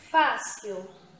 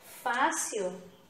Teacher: e fala paroxítonas então como paroxítonas tem aqui fácil então fácil a penúltima sílaba é a tônica é a pronunciada com mais intensidade